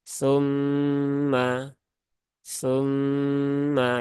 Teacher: ini hukumnya ghunah musyaddadah yaitu ghunah karena ada sebab tasdid maka tunaikan tasdidnya tunaikan taranumnya ditahan tiga harak tumma tumma ya sat dua tig ya Jadi